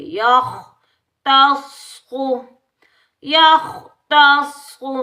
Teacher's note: خا حروف مستعلیہ صاد حروف مستعلیہ ان دونوں کو موٹا پڑھیں گے. یخ تصخو یختصو صاد کو تشدید کی وجہ سے سختی سے ادا کریں گے.